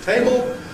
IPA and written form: ˈteɪbɫ (table)